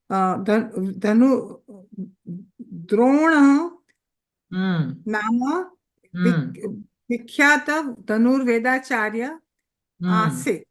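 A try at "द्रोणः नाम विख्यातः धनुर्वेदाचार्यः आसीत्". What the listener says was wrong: Dronaha Nama Vikhyataha Dhanur Vedacharyaha Asit. The Visargas also you have to pronounce completely, Bhagini.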